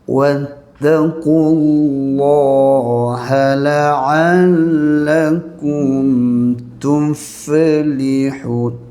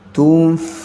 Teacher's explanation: Matikan fa, ada angin, hamas, sifat rakhawah, suara kan panjang.